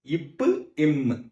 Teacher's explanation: Next பாக்க போறது இப்பு இம் நான் பேசுறேன் பாருங்க உதடு குவிுது பாத்திங்களா? சோ இப்போ இம்மும் உதடு ரெண்டையும் ஒட்டுவதால் உண்டாவது.